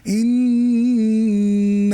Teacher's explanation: দুই ঠোঁট লাগানোর কোনো সুযোগ নাই। তুমি পড়েছো ইন, ঠোঁট খোলা থাকতে হবে।